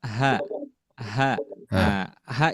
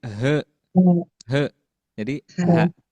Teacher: makhrajnya dari bawah ya, dari bawah tenggorokan. H jadi tipis. Kalau misalkan dibaca tebal jadi he he jadi ha.